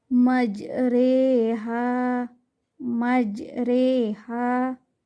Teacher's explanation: memiringkan bacaan fathah kearah bacaan kasrah atau memiringkan bacaan alif ke arah ya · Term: imalah